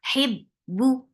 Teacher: for kasra give E sound attached with ba. And give a very sharp sound of ba.